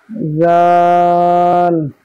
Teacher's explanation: জাল, জালের মাখরাজ হচ্ছে জিভের আগা এবং সামনের উপরের দুই দাঁতের আগার সাথে, জিভের আগা এবং সামনের উপরের দুই দাঁতের আগার সাথে লাগিয়ে উচ্চারিত হবে জাল